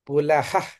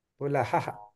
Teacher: విసర్గ ధ్వని ఎప్పుడూ కూడా అబ్రప్ట్ గా ఉంటుంది హకారం ఇలా పరిచినట్టు ఉంటుంది